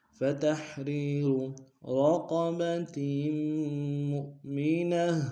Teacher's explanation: را موٹا ادا کریں گے، قاف موٹا ادا کریں گے تاکہ تنوین کو میم کے سامنے لیں گے، میم کو حمزہ کے سامنے لیں گے، جھٹکا دیں گے.